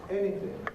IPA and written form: ˈeniθɪŋ (anything)